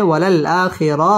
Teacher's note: ওয়ালাল আ মধ্যে বদল এক আলিফ টেনে পড়তে হবে